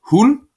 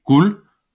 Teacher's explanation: at det er som om at det stumme d det det giver udtalen sådan et stød i enden